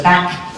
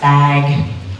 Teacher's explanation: The quality of the vowel there is the same, but since you're using your voice for the vowel, a, if you also use your voice for the next sound, the speaker perceives a longer duration of voicing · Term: Vowel length